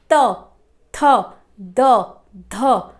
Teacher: हमारी जो जीवा है वो दांत को स्पर्श कर रही है